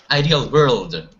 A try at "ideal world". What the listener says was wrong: you're putting a V with your W there